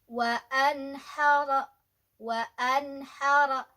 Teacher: ada nun sukun ya, ketemu dengan H, izhar, dibacanya jelas wa anhara